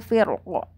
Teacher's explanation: Jadi pada kata firkin dibaca dengan dua cara, yaitu ro dibaca tebal ketika wakof. Ketika wakof, perhatikan ya, ketika wakof dengan sukun gitu, yaitu firqo gitu ya, berarti ro-nya tebal.